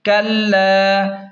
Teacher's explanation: ثم کاف لام زبر کلام، الف زبر لا، کلا. لام کو کھینچیں ایک الف کے برابر کیونکہ الف مدہ ہے اور لام پر تشدید ہے تو کاف کو لام کے ساتھ سختی سے ملائیں.